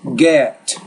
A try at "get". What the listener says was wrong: I think the get, you're not even carrying that sound long enough.